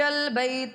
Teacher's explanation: بیتا میں یا ساکنہ سے پہلے زبر ہے اس لیے یا لین ہوگا تو اس بغیر کھینچے اور بغیر جھٹکا دے پڑھیں گے